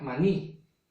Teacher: la mayor fuerza de voz recae en la última sílaba y además termina en una vocal. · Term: palabra aguda, aguda